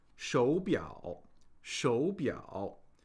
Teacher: in a word that has two third tones, we pronounce the first of the pair as a second tone.